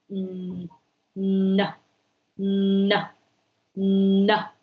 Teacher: And that is how we produce the sound, the nasal sound, like n, n, n. If you produce a sound n in that way, you can put your finger at the nostrils and you can feel there are some air escaping through the nose there.